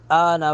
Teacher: آ پر مد متصل ہے تین الف کے برابر اس کو کھینچیں گے